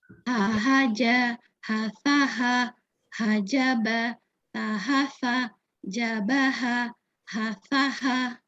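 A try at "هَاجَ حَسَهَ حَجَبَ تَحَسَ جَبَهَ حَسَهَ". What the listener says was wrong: Oke, bagus.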